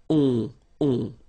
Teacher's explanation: Remember, you don't pronounce the final s, you get the on sound. Okay? Nasal in your nose, on.